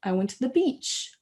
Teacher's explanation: Vous entendez to the beach, que ça monte à la fin de la phrase, et bien faites pareil.